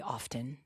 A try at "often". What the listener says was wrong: The word is often. The T is silent.